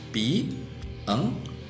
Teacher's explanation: Có é a última sílaba e a última sílaba é a mais forte, ou seja, é a sílaba tônica. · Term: oxítona